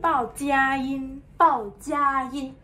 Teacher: Bao is in fourth tone 佳 first tone 音 first tone